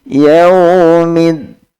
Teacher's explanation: maka dal harus agak ke depan ujung lidahnya. Bukan membaca yaumiddin, bukan ad-din, tapi yaumiddin, lebih ringan.